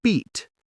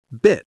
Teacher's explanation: Say beat. Big smile, wide mouth. Then say bit, smaller smile, shorter sound.